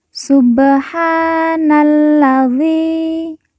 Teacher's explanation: [Musik] subhanalladzi Na langsung masuk huruf lam alif tidak dibaca kemudian karena La ini bertasdid maka kita baca ditekan dan ditahan dua harakat · kita baca panjang dua harakat karena di depannya terdapat huruf ya sukun atau ya mati yang merupakan tanda baca panjang dua harakat subhanalladzi sakharo Kho bertasdid